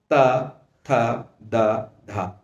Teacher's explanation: जिह्वा दांतों से टकरा रही है, इसलिए इन्हें दंतव्य कहा जाता है, क्योंकि इनका उच्चारण स्थान दांत होता है।